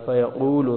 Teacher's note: قاف کو موٹا پڑھیں گے